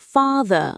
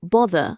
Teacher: In British English, father is pronounced father with a long a but is bother with a rounded o. Two distinct vowels. · In American English, however, both words use the same vowel, ah. So father and bother rhyme. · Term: father-bother merger